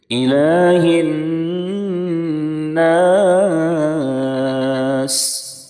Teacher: کھڑا زبر الف مدہ کے برابر ہوتا ہے، اس کو ایک الف کے برابر کھینچیں گے، تقریباً 1 سیکنڈ کھینچیں گے۔ یہاں پر بھی نون کے اوپر تشدید ہے، اس میں بھی غنہ کریں گے، وقف کی وجہ سے سین ساکن ہو جائے گی۔